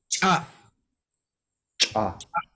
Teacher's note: remember the glottal stop makes it stop abruptly